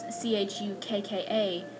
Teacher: ch hu kka and you pronounce it CH it kind of you kind of break it to make it sound like you're uh saying the K twice